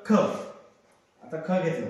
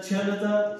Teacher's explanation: ज्याच्या तोंडातून हवा निघते हवा तर त्याला काय महाप्राण